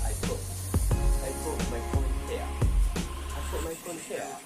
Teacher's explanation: jadi glottal sound itu suara petikan T di leher kayak gitu. Jadi bunyinya bukan I put lagi, tapi I put my phone here.